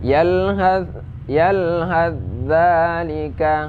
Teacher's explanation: Yalhath dzalika ya, ada dalam surat nah yang barusan yaitu yalhadz dzalika ya, tha-nya dimasukkan ke dalam za ya, jadi tidak dibaca lagi